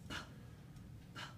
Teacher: my vocal folds don't start vibrating until after I've released the air and I'm getting ready to produce the vowel that comes after it.